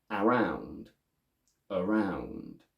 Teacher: the correct version is around with the first a going from a to schwa